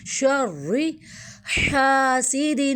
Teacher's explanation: را جو ہے اس کو موٹا پڑھیں گے، حلق سے نکالیں گے اور الف مدہ